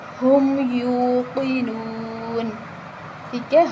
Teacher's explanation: قاف کو موٹا پڑھا جائے گا